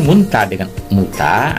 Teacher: ada penghilangan fonem N di tengah kata